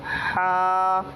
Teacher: اس والے ہا میں اور اس والے ہا میں فرق صرف اتنا ہے، یہ والا ہا ہوا نکالتا ہے، یہ والا ہا جو ہوتا ہے اس سے صرف ہوا نکلتی ہے